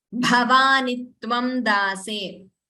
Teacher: Bhavani, the first letter itself, it starts with Mahaprana, so that Mahaprana should be heard clearly.